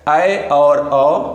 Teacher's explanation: ऐसे स्वर जिनके उच्चारण में हमारा मुख आधा खुले उसे बोलेंगे अर्ध विवृत स्वर अर्ध विवृत स्वर में आता है ऐ और औ दो स्वर